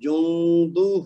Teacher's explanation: نون ساکن کا اخفا کریں گے 2 حرکت تک غنہ کرتے ہوئے، اور آخر میں ہا کو لمبا کریں گے 2 حرکت تک، کیونکہ یہ واو مد کا بدل ہے.